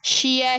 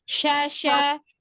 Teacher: langsung ke a enggak enggak mampir ke I